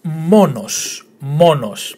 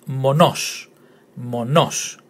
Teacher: The emphasis on the first syllable, monos.